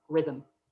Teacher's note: the schwa even appears where there is no vowel at all. So in that second syllable of rhythm.